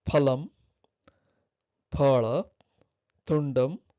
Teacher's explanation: the final vowel is shortened